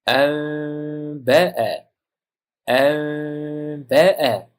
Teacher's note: Mana n sukun bo'ldi, undan keyin b harfi kelyapti. Nunni mimga almashtirib, mimni b ning chiqadigan joyiga yashirib, dimog' bilan o'qish kerak. Anba'a. Anba'a deymiz, shunda anba'a desak xato bo'ladi fonetik jihatdan.